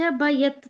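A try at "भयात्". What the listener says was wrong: ಭಯಾತ್ ಹೇಳಿ ಮಾತಾಜಿ. ಯಾ ದೀರ್ಘ ಇದೆ. ಕಾಯ ಕ್ಲೇಶ ಭಯಾತ್ ತ್ಯಜೇತ್.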